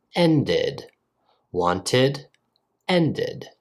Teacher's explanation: have the ID sound as well or for another example ended since end ends with a D sound we pronounce the e d as ID